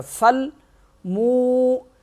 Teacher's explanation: میم واو پیش مو 1 الف کے برابر کھینچا جائے گا